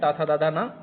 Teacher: दंत से उच्चारित होने के कारण इन्हें दंते वर्ण कहा जाता है और इस वर्ग को ता वर्ग कहते हैं।